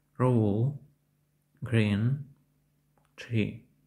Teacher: звук схожий на український приголосний «р», однак він вимовляється не так різко та дзвінко. Трохи ковтається, немов вимовляємо його не до кінця, ніби трохи гракавимо.